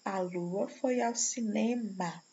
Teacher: Note que o ritmo desses versos é construído com a tonicidade recaindo sobre a segunda e a sétima sílaba poética